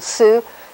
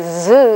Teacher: s is a voiceless alveolar fricative and z is a voiced alveolar fricative